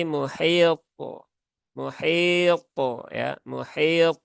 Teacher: diakhiri dengan huruf tho Yang sukun maka ini pantulan thnya juga perlu diperhatikan